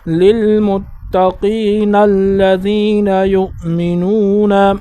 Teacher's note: جب ہم یہاں پر وقف نہیں کریں گے تو پھر اس کو نون کو لام کے ساتھ ملائیں گے